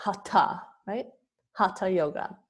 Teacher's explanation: the H is silent but the H gives it that aspirated sound